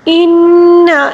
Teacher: یہاں پر نون مشدد کا غنہ ہے، اس کو غنے کے ساتھ پڑھنا ہوگا